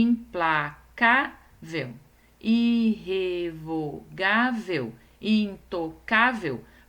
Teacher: todas essas palavras têm a penúltima sílaba acentuada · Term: paroxítonas